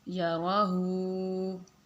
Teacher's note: ہا الٹا پیش ہو، چھوٹا ہا تو اس کو ہم سینے سے آواز نکال کے پڑھیں گے